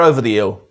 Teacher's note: Like in most regional accents in England /h/s are long gone.